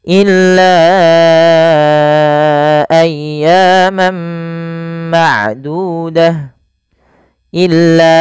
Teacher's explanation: panjangkan lanya sepanjang empat harakat · illa panjangkan lanya sepanjang 4 harakat karena ia ada bacaan mad jaiz munfasil